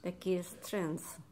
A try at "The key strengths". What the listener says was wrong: You gave me an "eh." Yeah, you give me an air between the two.